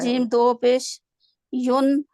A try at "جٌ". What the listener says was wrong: जीम दे दो पे जुन, जा जीम की आवाज लाएं, जुन।